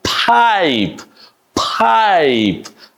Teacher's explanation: there's a long I vowel sound, and you pronounce this bit on the higher pitch, and you do it like an I.